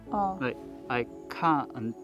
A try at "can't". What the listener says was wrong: Because if you don't emphasize the t, it sounds like can, which is the opposite of can't. So you have to emphasize the t.